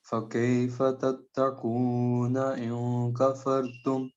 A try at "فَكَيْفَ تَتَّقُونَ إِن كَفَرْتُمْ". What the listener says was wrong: شاباش.